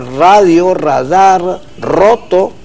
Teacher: En el otro caso, en la posición inicial de palabra, radio, radar, roto, se pronuncian, aunque se escriban con R, se pronuncian con un sonido doble y vibrante